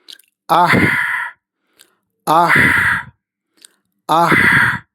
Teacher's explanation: തൊണ്ടയിൽ നിന്ന് മൃദുവായി വരുന്ന ഹംസ്. ഹംസ് പ്ലസ് തൊണ്ടയുടെ ഉള്ളിൽ മൃദുവായി ഘർഷണം നടക്കുന്നു. ഇവിടെ ശ്വാസം മൃദുവായതും ചൂടേറിയതായും അനുഭവപ്പെടും. · ഹാ തൊണ്ടയുടെ മധ്യഭാഗത്ത് നിന്ന് പുറപ്പെടുന്ന അക്ഷരമാണെന്ന് നമുക്കറിയാം.